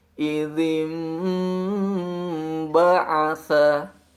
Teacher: terdapat huruf nun sukun, setelahnya ada huruf ba, maka akan memunculkan bunyi mim sukun.